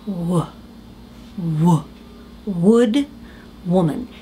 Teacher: it's almost as if the vowel sound vanishes into just the W it's just w with air w w w woman if you